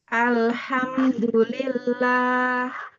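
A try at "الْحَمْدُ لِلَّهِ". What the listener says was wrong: Suaranya ke depan ya. Iya, kurang keluar karena kurang jauh, kurang dibuka rahangnya.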